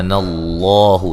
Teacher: لفظ اللہ کو موٹا ادا کریں گے، اس سے پہلے حرف پر زبر ہے۔ مد اصلی ہے۔